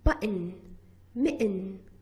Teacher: For example, in the words button, mitten, sometimes instead of pronouncing button and mitten, when we speak very rapidly, very fast, we produce a glottal stop and we say it button, mitten.